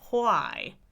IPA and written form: ʰwaɪ (why)